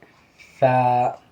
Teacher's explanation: جب سا پڑھیں گے تو دونوں دانتوں کے درمیان میں زبان رہیں گی